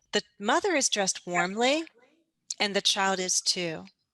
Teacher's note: You'll hear my voice pause, and you'll also hear me go down at the very end. This is the end of my sentence.